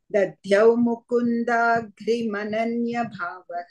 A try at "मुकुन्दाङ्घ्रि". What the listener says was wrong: Mukundangri. Angri. No, and also ng. Also one anuswara ng. Mukundangri. Anuswara is there.